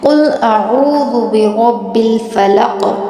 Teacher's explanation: अब ये कौफ जो है हमने पुर पढ़ना है